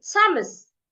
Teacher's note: I will not stick out my tongue to pronounce them because I don't have th again. I only have a t.